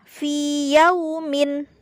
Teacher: tidak dibaca idgham atau dimasukkan dalam huruf yang kedua, tetapi harus dibaca panjang sebagaimana mestinya, ya. Jadi dibaca fi yaumin, bukan fi yaumin, ya.